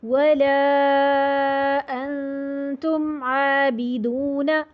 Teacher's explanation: اب یہاں پہ بھی ولا پہ مد جائز منفصل 4 حرکت پہ. انتم، یہاں نون کے بعد آپ دیکھ رہے ہیں تا آ رہا ہے.